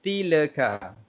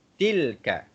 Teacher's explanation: Jadi tiada lantunan pada huruf lam.